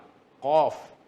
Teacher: Iaitu pangkal lidah apa dia? Kena kepada anak lidah.